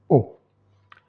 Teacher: La définition postérieure, prononcée à l'arrière, semi-chiusa pour être précis, mi-fermé, le dos de la langue va vers l'arrière et s'approche du voile du palais. C'est pour ça qu'on l'appelle aussi velare. · Arrotondata puisqu'il y a une projection des lèvres en avant. Si on voit dans le petit schéma reproduit, le O, il est plus bas que le OU. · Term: O chiusa, la vocale O